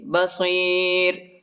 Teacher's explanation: آخر میں جو ہے را کو باریک پڑھیں گے، نرم پڑھیں گے